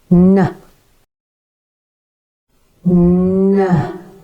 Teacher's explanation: And voiced consonant n, where the airflow is blocked by the tongue in the same place as t on the alveolar ridge, but instead of releasing the air through the mouth, it's diverted through the nose